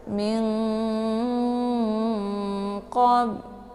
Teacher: Jadi min sukun bertemu dengan qaf merupakan ikhfa ab'ad ya. Jadi cara bacanya itu didengungkan ya, disamarkan bunyi nunnya, siap-siap masuk ke huruf qaf. Min, ditahan suaranya sampai masuk ke hidung.